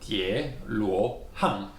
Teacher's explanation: So it is two rising tone, tie luo hang